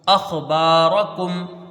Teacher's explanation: با میں الف مدہ ہے، اس کو کھینچ کے پڑھیں گے ایک الف کی مقدار